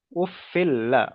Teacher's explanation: লামটা তো আরেকবার উচ্চারণ হবে দুবার উচ্চারণ হবে